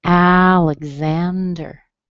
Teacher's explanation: this one is stressed on the third syllable, but the first syllable also has a strong vowel.